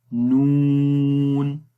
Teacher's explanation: इस्तिफाल के अंदर इस हर्फ को हमने बारीक पढ़ना है, मोटा नहीं पढ़ेंगे।